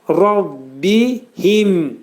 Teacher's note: hə hərfi boğazın aşağısından çıxarılır və incə oxunacaq